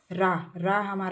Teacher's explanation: लुंठित मतलब लुढ़कता है। जो हमारी जीभ है वह लुढ़क रही है। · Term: लुंठित व्यंजन